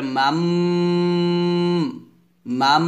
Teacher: দেখুন এখানে দেখুন নুন সাকিনের পর কি আসছে বা আসছে তো নুন সাকিনের পর বা আসার কারণে কি করব আমরা এই নুনটাকে মিম উচ্চারণ করব মিম নুন জবর মান আছে এখানে আর উচ্চারণ করতে হবে মিম